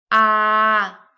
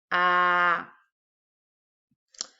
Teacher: your tongue is going to be on the back of your mouth, close to your uvula, and low, close of the floor of your mouth, like ah.